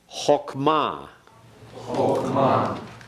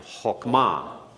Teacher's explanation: be certain you put the accent on the last syllable.